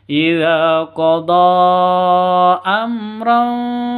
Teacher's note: tanwin bertemu dengan Fa samar didengungkan siap-siap ke huruf Fanya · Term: ikhfa Hakiki